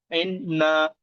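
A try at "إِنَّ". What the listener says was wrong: এক নম্বর একটা ভুল বলেছেন। আন্না হবে ইন্না বলেছেন। নুন এবং মিমের উপরে তাসদিদ এলে একালি পরিমাণ গুণনা করে পড়া উচিত, তো এখানে নুনের উপরে তাসদিদ এসছে না ভাই? নুনের উপরে তাসদিদ এসছে তো।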